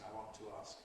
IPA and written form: aɪ ˈwɒnt tu ˈɑːsk (I want to ask)